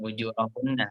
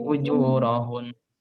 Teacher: kita wakofkan atau kita berhenti, maka kita jadikan sukun dan agak ditekan karena dia ada tasdidnya.